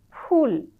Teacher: শতকরা একেবারে বলা যায় 90 ভাগে উচ্চারণ করবে ফুল। দুই ঠোট একসঙ্গে মিলবে না।